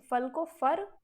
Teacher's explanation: ला जो था उसको कई जगह पर रा कहा जाने लगा।